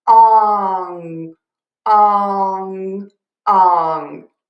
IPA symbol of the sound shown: ɔŋ